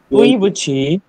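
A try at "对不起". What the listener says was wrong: এটা বু নাই যে বু বলতেছেন আমি কি একবারও বু বলছি আমি কি এটাকে একবারও বু বলছি বিয়ের উচ্চারণ কি ব আমরা কি বিয়ের উচ্চারণ ব পড়েছি নাকি প পড়েছি কোনটা তুই পু ছি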